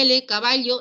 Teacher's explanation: el aire sale por los costados por la zona lateral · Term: laterales